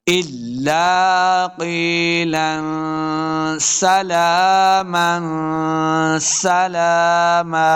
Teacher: دو زبر کی تنوین کے بعد آگے وقف ہے تو ہم نے زبر وقف کریں گے تو ایک زبر کو ساکن کر دینا ہے